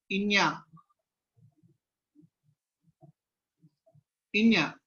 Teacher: పవర్గం యొక్క అనునాసికము మా. ఓకే, ఈ ఇన్య అనేది కంఠ్యం అవుతుంది, అనునాసికం అవుతుంది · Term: కంఠ్యానునాసికము